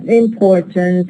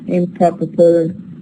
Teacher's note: Similar to important, if you remember, improbable, the na again becomes bilabial because it is followed by bilabial sound.